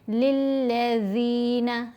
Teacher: ज़ाल को नर्म पढ़ें, ज़ुबान दांतों के बीच में लेकर आएँ और 2 हरकात की मिक़दार लंबा करेंगे क्योंकि ज़ेर के साथ या साकिन है, ये या मद्दा है।